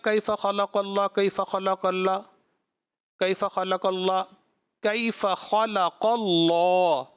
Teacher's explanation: خا کو پر پڑھنا تھا لیکن جتنا پر پڑھنا چاہیے تھا اتنا پر نہیں پڑھا · قاف کے بعد لام جو ہے وہ اللہ کا نام ہے، اس میں جلالت ہے، اس کو پر پڑھنا تھا